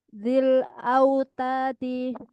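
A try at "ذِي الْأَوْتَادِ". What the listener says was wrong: kurang panjang tanya. Zil autadi.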